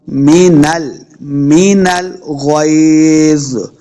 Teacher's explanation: غین کو موٹا پڑھیں گے، غین حروف مستعلیہ سے ہے، لمبا نہیں کریں گے. غین زبر یا، غی، لمبا بالکل نہیں کرنا.